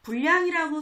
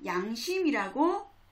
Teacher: 단어의 첫머리에 올 때는 리을이 탈락한다. 그래서 야, 여, 예, 요, 유, 이가 되죠.